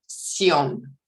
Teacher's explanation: I hear a diphthong in there, sion, an on-glide diphthong